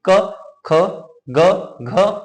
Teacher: क जो जीव है हमारी कंठ को स्पर्श करके निकलेगी अब जो ध्वनि जो निकलेगी वो कंठ से निकलेगी